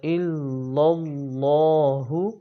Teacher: اللہ تعالیٰ کا لام جب بھی پڑھا جاتا ہے تو اس کو ہر حال میں موٹا پڑھیں گے کہ اللہ تعالیٰ کے لام سے پہلے جب زبر اور پیش آ جائے تو اس کو موٹا پڑھنا چاہیے۔